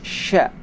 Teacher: Suara angin harus menyebar dengan kuat. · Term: huruf shin